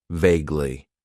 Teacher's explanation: It has 2 syllables, and the stress is on that first syllable